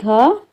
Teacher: घ के उच्चारण में जिह्वा तालु से नहीं टकराती है। घ एक कंठ्य वर्ण है।